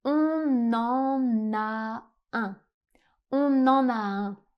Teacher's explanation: En français, très souvent, quand un mot termine par une consonne et que le mot suivant commence par une voyelle, on fait ce qu'on appelle une liaison, c'est à dire qu'on va prononcer les mots comme si ils ne formaient qu'un seul mot. Donc on ne va pas dire ici "on en a un." Si vous prononcez la phrase de cette façon, on comprendrait même pas le sens. · On en. Et on fait une autre liaison entre le N et le A.